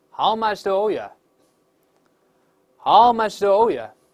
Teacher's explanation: 这个 you 读快之后发生元音弱化，就最后那个哦发成啊这个声音